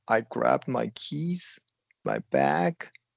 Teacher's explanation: You're going to go up, pause, and then go to the next one.